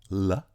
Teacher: And we've studied two allophones, We've studied two allophones of the lateral approximant in English, the clear L, the L, an alveolar lateral approximant · in which the air flows around the sides of the tongue, and the voice follows the path of the air around the sides of the tongue